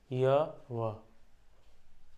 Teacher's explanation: जैसे स्वर वर्ण की ध्वनि सीधे निकल जाती है ना बिना जीभों के जीभ का वो किए हुए ऊपर या नीचे आए हुए वैसे ही य और व तो इनको अर्ध स्वर भी कहा जाता है क्योंकि लगभग लगभग स्वर जैसे हैं अर्ध स्वर मतलब इनमें जीभ जो है स्वर वर्णों की तरह बहुत कम उठता है। यानी कि ज्यादा बाधा नहीं होती है।